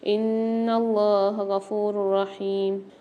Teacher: ان اللہ غفور رحیم، نون پر مشدد غنہ کر کے پڑھیں گے، اللہ کو لام کو موٹا پڑھیں گے، کھینچ کے بھی پڑھیں گے اور را کے اوپر 2 پیش آ رہے ہیں، 2 پیش کی تنوین کے بعد را مشدد آ رہی ہے تو یہاں پر ادغام بلا غنہ والا قاعدہ ہوگا، غنہ کے بغیر ادغام کر کے پڑھیں گے، یعنی یہاں پر ہم غنہ نہیں کریں گے۔